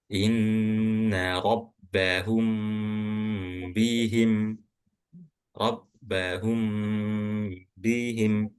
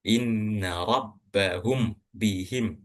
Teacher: Jadi mimnya itu harus didengungkan. Ketika kapan? Ketika mim sukun ini bertemu dengan huruf ba. Atau yang kita sebut dengan ikhfa syafawi.